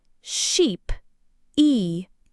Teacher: Your tongue blade is high and quite far forward in your mouth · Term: long e sound